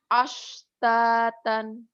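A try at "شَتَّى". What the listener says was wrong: Shin. Ashtatan. Shinnya gede anginnya. Kadang-kadang latihan shin itu bibir itu sampai sakit. Monyong-monyong. Dibuka lebar.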